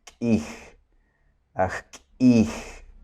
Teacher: Acento glotal es un sonido explosivo que se hace con la garganta, en donde no dices kij, es kij, kij.